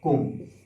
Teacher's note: उच्चारण स्थान, इसका उच्चारण स्थान होता है नाक से। जब इसका उच्चारण किया जाता है तो नाक से वायु निकलती है। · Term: अनुस्वार